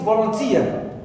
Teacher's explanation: Tia is the last syllable in this word, and it is stressed.